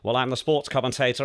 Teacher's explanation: the voice is right at the back of the throat